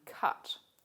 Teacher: australian english also has another low central vowel the vowel in cut this is usually represented with this symbol here called a carrot · You'll notice that on the IPA chart, this symbol is supposed to represent a mid-low back unrounded vowel. In Australian English, this vowel is actually said with the tongue further forward, not as far back, but the symbol is used for this particular Australian English vowel.